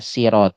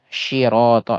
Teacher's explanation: masih pakai sin ya sirat asalkan jangan sampai ke ee syin ya syirat itu sudah menyimpangnya jauh ya